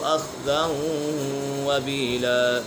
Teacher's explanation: وبيلا، یہاں پر ادغام یرملون کا قید لگ رہا ہے کیونکہ تنوین کے بعد واو حرف یرملون میں سے ہے تو یہاں ادغام یرملون ہوگا، یعنی غنہ کر کے پڑھیں گے